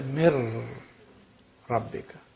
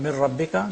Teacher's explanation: This is complete assimilation. Mir rabbika, noon completely is lost. It becomes ra.